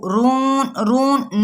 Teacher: nasal sound بالکل نہ آئے